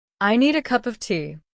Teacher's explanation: Listen to how cup of becomes cuppa.